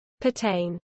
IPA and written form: pɜːˈtɛɪn (pertain)